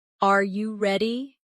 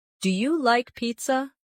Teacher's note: pitch of their voice goes up at the end.